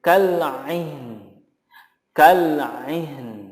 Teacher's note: Nunnya harus muncul walaupun tidak terdengar terlalu jelas gitu atau nampak sekali, tetapi apapun itu makhrajnya harus tetap diberikan.